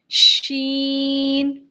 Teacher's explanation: शीन के अंदर जो सिफ पाई जाती है वो तफशी की है। तफशी कहते हैं सेपरेट करने को। यानी फैलाने को। · जुबान के बीच वाला जो हिस्सा है वो ये ऊपर के तालू के साथ नहीं लग रहा।